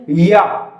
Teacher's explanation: तो इनको जब आप उच्चारण करेंगे तो आपको समझ में आएगा या कंठी से बोला जा रहा है या नहीं, या ओष्ठ से शुरू करते हैं, ओष्ठ से बोला जाएगा, नहीं बोलेंगे, ध्यान से देखेंगे, या नहीं है तो या का सीधा सीधा उच्चारण स्थल है तालव्य।